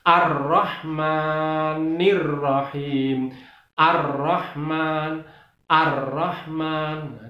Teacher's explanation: Kemudian lafal atau huruf ro-nya itu ditasdid, karena itu cara membacanya harus ditekan